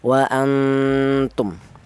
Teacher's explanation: Maka bunyi yang dihasilkan itu bunyinya tidak terlalu dengung, bahkan yang lebih kuat ini samarnya seperti ini, wa antum.